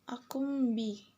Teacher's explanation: Ini adalah iklab karena nun sukun bertemu huruf ba. Ketika huruf nun berganti menjadi mim.